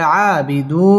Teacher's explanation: আ খারা জবর এক আলিফ টান দিয়ে পড়তে হবে আবিদু মধ্যে তাবাই এক আলিফ টানে পড়তে হবে ওয়াও ঠোঁট গোল